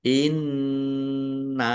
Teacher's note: Nun tasdid dibaca ghunah atau bacaan ghunah atau mendengung ditahan. Inna nun fathah alif mad thobi'i.